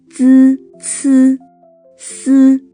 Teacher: 鸡七西 Group 6, T, C, S. These sounds are produced with the tongue touching the upper teeth ridge. But unlike group T, N, L, the tongue here moves outward rather than inward.